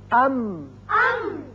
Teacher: اب اس کا میم، ام. اب ہونٹوں کا خشکی کا حصہ ملا تو میم ادا ہوا